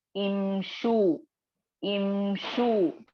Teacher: शीन पर पेश है, लेकिन हमजतुल वस्ल पर आप क्या करेंगे, जेर ही लगा हुआ होगा, और जेर के साथ ही इसको इमशु पढ़ेंगे, उमशु नहीं पढ़ेंगे